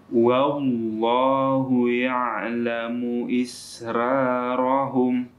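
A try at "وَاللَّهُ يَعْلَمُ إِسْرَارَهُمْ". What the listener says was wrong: Isra. Munya pendek, kita pendekkan.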